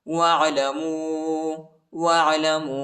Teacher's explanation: वाव साकिना है और छोटा मत भी है, इसको तकरीबन 2-3 सेकंड तक खींचेंगे।